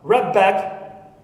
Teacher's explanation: the da turns into ba when it is followed always by those bilabial sounds